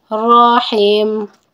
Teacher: را کو پر پڑھا کیونکہ را پہ زبر ہے. جب را پہ زبر اور پیش ہوتی ہے تو را کو موٹا پڑھا جاتا ہے اور جب را پہ زیر ہوتی ہے تو را کو باریک پڑھا جاتا ہے.